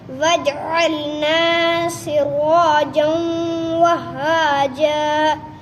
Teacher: تنوین کے بعد ادغام یرملون میں سے واو آیا، غنہ کر کر پڑھیں گے